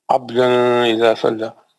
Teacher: نون تنوین کا اظہار حلقی حرف حمزہ.